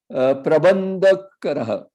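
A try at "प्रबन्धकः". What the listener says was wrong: Kara is not there.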